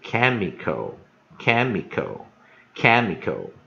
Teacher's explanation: 误不念，直接念▁or▁flow,▁flooring，▁好这样念。所以建议你哈▁，flooring，▁好▁，flooring,▁flooring，▁好，如果上面念，那下面就▁flooring。Flooring,▁flooring，▁好，那当然▁flooring，▁好，这个念法，也是蛮多人念的哈，所以我们就以多数人来念哈，以三元音的结构，就是第一个降音，三元音结构第一个降音，第二个不念，第三个跟着念，好▁，flooring，▁好，就是这个意思哈。好，下一个字▁chemical，▁chemical，▁chemical，▁好，所以我们看▁chemical。Chemical▁所以我们有两个▁inter▁我们这边有两个▁interpunk▁所以当然什么是▁interpunk▁呢？▁interpunk▁就是分音符号所以两个分音符号把这个▁chemical▁分成三个音节 那当然它的重音在第一个音节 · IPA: ['kɛməkəl]